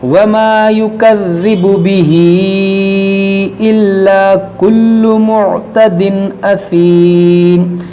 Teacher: यहाँ पर देखिए, ये खड़ी ज़ेर या मद्दा के कायम मकाम है, और या मद्दा के बाद हमज़ा दूसरे कलमे में है तो यहाँ मद्दे मुनफसिल होगा, खींचेंगे इसको